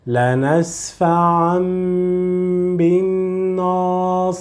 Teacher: convert the sound of Tanween, which is in, to Mim, and prolong it a little bit more